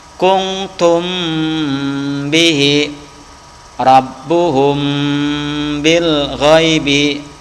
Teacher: bibir tertutup tetapi masih terdengar suara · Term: Ikhfa Syafawi